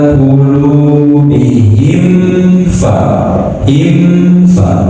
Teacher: ketika ada mim bertemu fa, maka mimnya harus dibaca sempurna